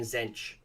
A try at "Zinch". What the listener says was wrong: I don't think that's a bad pronunciation of it. I mean, I say Zinch, but I could see that sounds bad in an Australian accent to say it with like the long E.